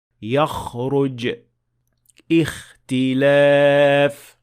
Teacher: the sound of kha should come from much deeper in the mouth, in fact from the nearest part of the throat